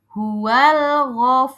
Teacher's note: rnya harus terdengar tebal atau tafhim.